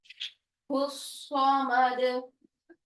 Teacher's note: दाल साकिन जब होता है तो आवाज को हिलाते हैं